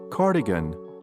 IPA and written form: ˈkɑrdɪgən (Cardigan)